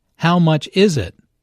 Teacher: Notice that the main sentence stress falls on is in this question.